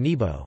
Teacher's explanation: short falling as in nȅbo ('sky') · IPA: /ˈnêbo/